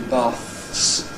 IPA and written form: bɑːθs (baths)